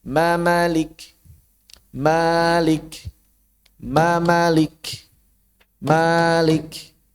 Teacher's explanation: Hitungan satu harakat satu huruf ditambah mimnya satu berarti totalnya dua. Begitu yang asalnya ma ditambah lagi satu jadi ma.